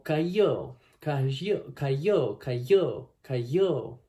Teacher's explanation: Primero, uno puede emplear la fricativa palatal sonora, como cayó, cayó, cayó, cayó, cayó, ¿no? · No hay nada de j, no hay nada de sh, nada así, sino que es una fricativa palatal sonora, la ya, cayó.